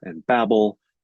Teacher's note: the consonant sounds are the same it's only the vowel the E and the ah that changes between the repetition